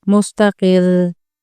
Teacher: रॉ मुशद्दद के वक्फ में तकरीर यानी वाइब्रेशन आ जाती है। रॉ मुशद्दद पर वक्फ होता है तो रॉ मुशद्दद से पहले हर्फ की हरकत को देखा जाता है, फिर उस रॉ को वक्फ की हालत में भारी या बारीक पढ़ते हैं, लेकिन उसमें तकरीर यानी हल्की वाइब्रेशन बाकी रहती है।